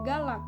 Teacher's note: bunyi hambat glotal jika terdapat di akhir kata